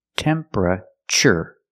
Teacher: The TU makes a ch sound like chicken.